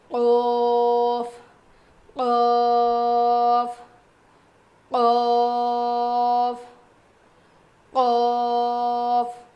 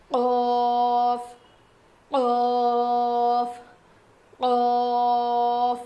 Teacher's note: زبان کی جڑ اور اوپر کے تالو سے قوف ادا ہوتا ہے. تو جو ہماری چھوٹی زبان ہے نا، جو تالو ہے نا، وہ تھوڑا سا اوپر اٹھے گا جب ہم یہ پڑھیں گے.